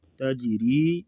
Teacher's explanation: تجری جیم ساکن ہے تو یہاں پر قلقلہ ہوگا